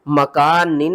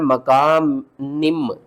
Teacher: नून को हमने मीम के साथ मिलाकर पढ़ना है। · नून दो जेर निन की आवाज को नून मीम दो जेर निम करके पढ़ना है। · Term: इकलाब